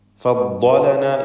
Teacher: നാവിൻ്റെ സൈഡ് മേലെ അണപ്പല്ലിനോട് ചേർത്തുകൊണ്ട് ഇടതുവശത്ത് നിന്ന് ഉച്ചരിക്കലാണ് സൗകര്യം. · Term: ദ്വാദിൻ്റെ മഖ്റജ്